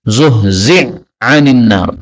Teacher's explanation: ini hak ketemu dengan ain. Ini boleh idgham. Maka hak pertama, maka haknya ini hilang ya.